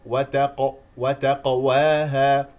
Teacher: القاف هنا من كلمه وتقواها مقلقله ساكنه ايضا اعطيها حقها من التفخيم